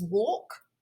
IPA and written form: wɔːk (walk)